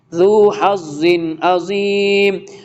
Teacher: ذو حظ عظیم، اظہار ہو رہا ہے، ذو کے نیچے دو زیر ہے، تنوین ہے اور اس کے بعد حرف ہلکے میں سے عین آ رہا، تو کلیئر ریڈ کریں گے